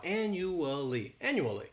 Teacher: this word has four syllables and the stress is on that first syllable the second syllable it's like you're just saying that letter U and the third syllable has that schwa